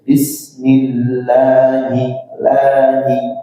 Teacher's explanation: Lanya panjangnya berapa, Pak? Dua harakat saja. Artinya tidak perlu terlalu panjang. Nah, kadang kesalahan kita adalah membacanya terlalu panjang. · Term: mad thbi'i